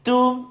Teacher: ta kena hati-hati supaya tak terkesan dengan isti'la ataupun tebalnya huruf dad. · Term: huruf ta